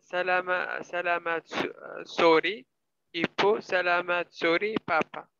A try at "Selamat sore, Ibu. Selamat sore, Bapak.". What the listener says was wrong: Yeah, it's better, but it's not sorry, but sore. Selamat Not sorry, but sore. sore, Ibu. Selamat sore. Sore, Bapak.